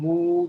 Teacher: kalau yang huruf ma itu keluarnya dari 2 bibir Pak